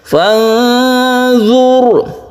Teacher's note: ketika kita membaca nun kita bersiap membaca dha, itu artinya ikhfa.